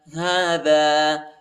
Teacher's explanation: ہا کے اوپر کڑا زبر آیا ہے، اس کو ایک الف کی مقدار تک کھینچیں گے